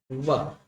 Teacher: जो नीचे का जो होठ है थोड़ा सा राउंड होता है, और ऊपर का जो दांत वो उस जब उस होठ को टच करता है। ये हमारे दंतोष्ठ, दांत प्लस होस्ट है।